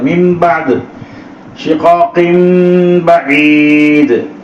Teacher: அந்த நூனை மீமா மாத்திரனும் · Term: இக்லாப்